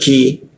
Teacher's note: Ki di siku lidah, lidahnya kita turunkan. Jadi ada hembusan udara.